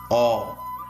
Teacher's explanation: The first syllable is A, pronounced as Aw, which is sustained for a short period of time.